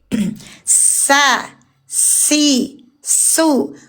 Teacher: huruf sin keluar napas berdesis mengalir